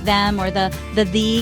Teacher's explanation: in super casual fast speech, especially with words like them or the the the can get squished into more of a d sound